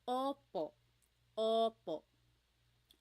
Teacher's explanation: Sometimes I think of it like having a ball in your mouth. Your tongue gets kind of pushed back and down a little bit and the inside of your mouth is open and wide.